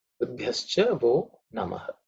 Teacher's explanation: the b has to be aspirated because it's the 4th letter in the Pavarga.